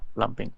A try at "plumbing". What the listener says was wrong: Water supply. Yeah. The B is not pronounced. Plumbing, silent B. So just plumbing. Yeah, and the other one does not have the silent B. So there's even two spellings for it, but we never pronounce the B. It's just plumbing. There's no B.